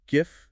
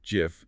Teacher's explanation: It can be pronounced GIF with a hard G, like in grape or gift, or GIF with a soft G, like in giraffe or the peanut butter brand.